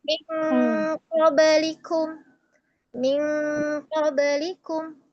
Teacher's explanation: Maka di sini ee ikhfa pada qof dan kaf ya dengungnya kan berbeda.